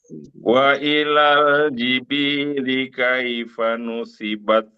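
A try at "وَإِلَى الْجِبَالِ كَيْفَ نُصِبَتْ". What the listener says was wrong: Oke, lebih teliti lagi, bukan jibili, jibali.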